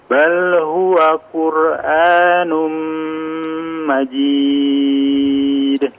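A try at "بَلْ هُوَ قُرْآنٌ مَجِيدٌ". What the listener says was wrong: Perjelas lagi huruf qafnya, afwan.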